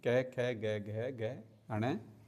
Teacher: कै हमारा कंठ्य वर्ग का व्यंजन होता है, ये कंठ से बोले जाते हैं